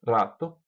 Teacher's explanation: Pode soar como a língua batendo nos alvéolos, rato, como fazem os paulistas.